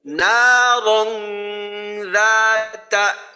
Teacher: র মোটা এবং গুন্না হবে ইকফা গুন্না, আর রা এক আলিফ লম্বা